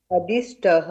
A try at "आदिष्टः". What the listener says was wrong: अदिष्ट नहीं, आ plus this है, आदिष्टः।